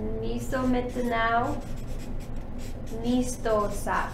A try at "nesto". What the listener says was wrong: Okay, so you gotta remember there's no bar on top of that one, so this makes the ni, ni, ne.